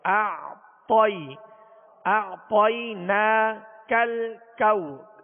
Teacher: دونوں کاف باریک ہیں، یہ ڈنڈی والے کاف ہیں، دونوں باریک ہیں